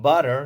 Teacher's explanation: the T in words like butter sounds more like a soft D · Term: flapping